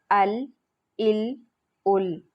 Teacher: لام کا مخرج زبان کا کنارہ، زبان کا سائیڈ والا حصہ، زبان کا کنارہ اور اوپر کے سامنے والے 8 دانتوں کے مسوڑوں سے ادا ہوتا ہے